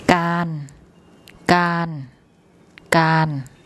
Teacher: การการการ What you hear then is that the raw that has an R sound here as an initial consonant now has an N sound as a final consonant